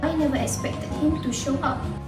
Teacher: she omits the final consonant R in never and continues to pronounce if in expected right after the sound in never.